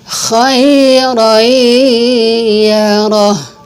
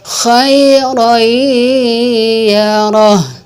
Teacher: Kalau kita baca khairayyarah, itu belum masuk kepada idgham biguna karena harus ditahan dan didengung. Dimasukkan tanwinnya dilebur masuk ke dalam suara iya.